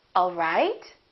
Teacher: My pitch goes down at the end for a statement, all right. Now, if this is a question, I would say it differently. The word right, the pitch would go up.